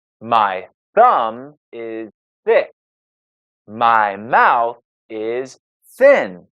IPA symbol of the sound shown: θ